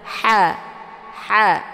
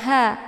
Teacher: ha ini merupakan sifatnya hamas. Jadi dia ada desis angin yang agak samar-samar. Cara bacanya dengan dialirkan desis angin.